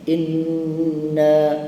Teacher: nun dan mim sabdu dia baca dua harakat atau lebih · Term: nun musyaddah